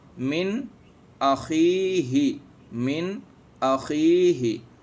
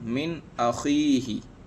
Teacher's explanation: نون کو ظاہر کر کے پڑھیں گے، یعنی گنہ نہیں ہوگا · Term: اظہار حلقی